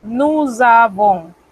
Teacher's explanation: La S se convierte en una Z. Esto en los apuntes de fonética se le llama liaison.